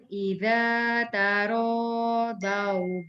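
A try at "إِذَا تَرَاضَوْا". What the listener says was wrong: Jangan dau. Dau dia jadi da. Dia do. Do. Idza taradau.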